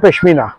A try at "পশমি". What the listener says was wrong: পশমিনা নয়। না নয়, ও পশমি।